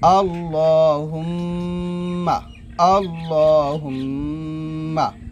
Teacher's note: আল্লাহুম্মা হামজা লাম জবর আল লাম খরা জব ল, এখানে একটা টান দিবেন আল ল, হা মিম পেশ হুম, মিম জবর মা হুম, মা হুম এখানে অবশ্যই গুণ আদায় করবেন